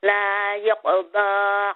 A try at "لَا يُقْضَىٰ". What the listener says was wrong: Make the dhamma clear. لا يقضى. So number 1 is, sister, you need to make the dhamma clear. It did sound like you're saying la yaqada, not ya, you. La yuqada.